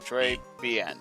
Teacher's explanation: The R in Trey is not a hard Spanish R, but a softer French R, and the final N is nasal. So sound sounds like it's kind of coming through your through your nose basically like uh >> like that or something >> I don't know >> the one we're >> simply saba meaning how are you? · with a short, slight guttural R, a short E sound, and a nasal N at the end for bien